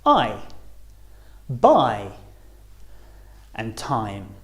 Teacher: we're going from the bottom row to the top so our mouth start wide open and closes as we say the sound I starting on the r and finishing on the e i as